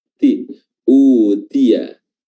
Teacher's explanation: Tia, di sini ada huruf ta yang berharakat kasrah, ti, ya, diperjelas lagi hamznya, baik dia kasrah, baik dia sukun dan sebagainya. Pokoknya huruf ta harus ada hams, harus ada udara atau nafas yang keluar beriringan dengan diucapkannya huruf tersebut